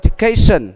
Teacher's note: vậy education, âm nhấn nó đó là cation